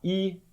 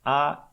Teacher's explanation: Mas ela faz um canal para onde o ar vai passar mais estreito, certo? Então a gente diz que o I é uma vogal bem fechada, enquanto que o A é uma vogal mais aberta. E nessa linha, né, você pode fazer uma comparação em toda essa série aqui de vogais e você vai perceber que o A é a mais aberta de todas, enquanto que o I é a mais fechada.